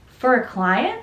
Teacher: So the intonation is going up, and this is sometimes referred to as up speak because this is not actually a question.